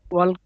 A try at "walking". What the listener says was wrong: ওয়াকিং, ওয়াকিং, এল এর উচ্চারণই নাই, ওয়াকিং, হ্যাঁ।